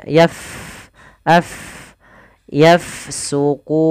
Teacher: huruf Fa dia sukun maka kita alirkan nafasnya